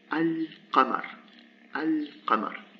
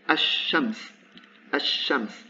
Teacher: if I put the definite article before shams, actually the lam disappears and it's replaced by a shadda. So in this case, the lam disappeared and I say ash-shams.